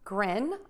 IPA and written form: grɪn (GRIN)